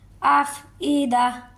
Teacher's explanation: حمزہ کو حمزہ واضح کر کے پڑھیں گے، عین کی آواز بھی نہیں نکالیں گے، کھینچے گے بھی نہیں، افئدہ، نیکسٹ پر وہی تا والا قاعدہ آ جائے گا، ٹھیک ہے۔